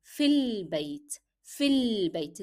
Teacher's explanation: you need to drop the sound of a. You move from ya directly to lam. So it will be sounding like fil bayt, fil bayt.